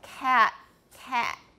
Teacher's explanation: to mark that that will be in a test okay so this is a glottalized final stop in a syllable